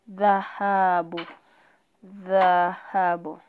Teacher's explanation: Dha inapotamkwa unapata kwamba kuna kule kubanwa kwa hewa kwa muda kisha kuachiliwa polepole. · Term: kikwamizo